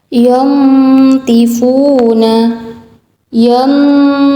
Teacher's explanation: cara membacanya adalah menyamarkan nun sukun dan disertai gunnah 2-3 harokat. Contohnya di sini nun sukun bertemu dengan huruf do. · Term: ikhfa hakiki